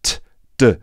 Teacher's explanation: Pronounced in the same way, but the d sound has the voice and t doesn't.